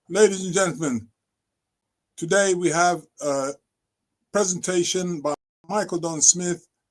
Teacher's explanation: That's a statement that's on one tone, and after a while, if I keep doing that, it would be quite boring. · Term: statement level